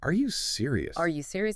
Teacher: You say that monotone, it almost sounds like you're not really asking or maybe you're being sarcastic, but put a slight upward inflection at the end. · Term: rising intonation